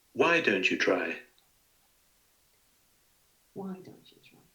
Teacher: So again, here you have the fall on each element each time.